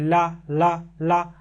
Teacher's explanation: पाशविक व्यंजन में जिहुआ के बगल भाग पर बल लगेगा